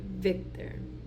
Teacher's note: a fricative labial Dental where you're using your lips and teeth